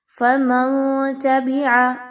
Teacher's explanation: نون ساکن کے بعد تا کا حرف ہے، اخفا کیا جائے گا، نون کی آواز کو ناک میں چھپانا ہے، غنہ بھی کرنا ہے، اور یاد رکھیے نون کی آواز کو کلیئر نہیں پڑھنا۔